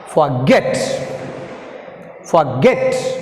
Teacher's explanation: Get is pronounced more forceful. So we put stress mark on get.